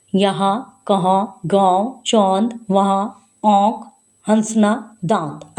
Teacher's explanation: अनुनासिक चंद्र बिंदी कहते हैं इसको। नाक और मुंह दोनों से इसका उच्चारण होता है।